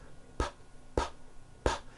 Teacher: your vocal cords are not producing a sound